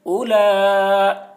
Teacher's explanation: او، لام کھڑا زبر لا، لام کے اوپر کھڑا زبر ہے، کھڑا زبر برابر ہوتا ہے الف مدہ کے، اس لیے کھڑا زبر کو ایک الف کے برابر کھینچ کر پڑھیں گے۔ اولا، اوپر مد، اولا، حمزہ زیر ای، حرف مد کے بعد حمزہ اسی کلمہ میں ہے، اس لیے مد متصل ہوا، مد متصل کو 3 یا 4 الف کے برابر کھینچ کر پڑھیں گے۔